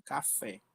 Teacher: Então o café, a última sílaba mais forte é o fé. E então ela é uma palavra classificada como oxítona.